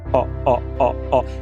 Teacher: O nome técnico dele é vogal semibaixa posterior arredondada. Então, tem que arredondar os lábios. ó. É igual o do português de pó. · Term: ó aberto